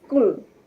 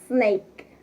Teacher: The characteristics about the sounds are the place of articulation about the sound is alveolar because the sound is made by raising the tip of the tongue toward the ridge that is right behind upper front teeth. We had a teeth, alveolar ridge, and the tip of the tongue.